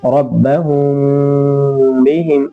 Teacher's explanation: اور دوسرا ہے اخفاء شفوی، میم ساکن کے بعد با آئے تو غنہ کے ساتھ اخفاء ہوگا